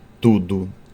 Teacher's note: Nós temos como exemplo a consoante T, o D, né? Tudo, quando a gente fala o T, nós temos aqui o contato da ponta da língua com os dentes superiores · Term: lingodentais